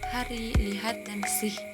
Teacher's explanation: Bunyi ini dihasilkan tanpa penutupan lidah atau bibir, hanya dari aliran udara yang keluar melalui laring. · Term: bunyi laringal